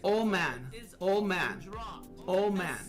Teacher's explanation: The D sound in old is often dropped. Especially speaking quickly, it becomes old man, old man, old man.